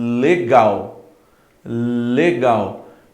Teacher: A sua língua está no céu da sua boca e a ponta da sua língua está nos dentes superiores